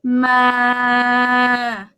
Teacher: So mid-tone is like this, flat. Ma. It's like you project your voice like you're singing, but like like that.